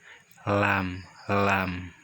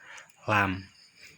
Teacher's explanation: Tempat keluarnya dari ujung tepi lidah.